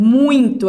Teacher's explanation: Primeiro vai ser a vogal, que é a mais forte, e depois a semivogal, que é mais fraco. Por exemplo, muito, a gente vai escutar mais o U do que o I. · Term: decrescente